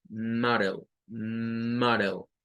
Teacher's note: la A suena como AO y suena una L al final